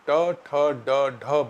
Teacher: ट वर्ग यानी ट ठ ड ढ बोलने में जीभ हमारे तालु के अगले हिस्से को छूती है जिसे मूर्धा कहते हैं